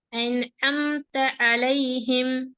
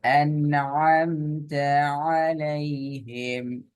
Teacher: குரல் நடு தொண்டையிலிருந்து அழுத்தமாக உச்சரிக்கணும்